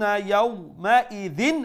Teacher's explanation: pronounce this تنوين beneath the ذال with إظهار meaning clearly without any nasal sound